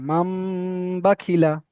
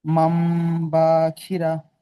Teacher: এখানে এবারে ইজরা করেন, নুন সাকিনের ইজরাটা করেন। নুন সাকিনের পরে বা এসেছে, তাই নুন সাকিনকে মিমের দ্বারাই পরিবর্তন করে এক আলিফ গুণা করে পড়তে হবে